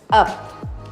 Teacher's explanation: itu adalah bunyi hambat, bilabial, tak bersuara, sehingga dikatakan sebagai bunyi ep